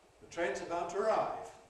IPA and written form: ðə ˈtreɪnz əˈbaʊt twəˈraɪv (The train's about to arrive)